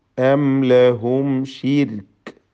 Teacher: ഷിർക്ക് എന്ന് പറയുമ്പോൾ റായിന് തർക്കീഖ് പ്രത്യേകം ശ്രദ്ധിക്കുക. റായിന് സുക്കൂനും തൊട്ടു മുമ്പിൽ സ്ഥിരപ്പെട്ട കസ്റുമുണ്ട് എന്നതുകൊണ്ട് റായിന് തർക്കീഖാണ്.